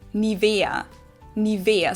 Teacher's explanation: So the emphasis is on the E